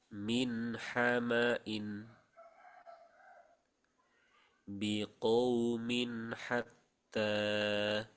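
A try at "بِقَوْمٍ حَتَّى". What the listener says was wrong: Dan kepanjangan. Biqaumin hatta.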